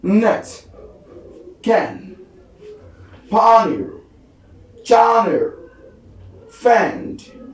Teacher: So the next one we have is n. So as in a voice alveolar nasal